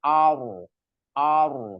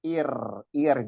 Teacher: kalau di awalnya fathah terus rnya sukun dibacanya tebal